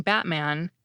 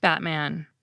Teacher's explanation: I’m saying “Batman” without ever putting my tongue tip where it needs to be to make an unreleased /t/ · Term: glottal stop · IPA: Ba[ʔ]man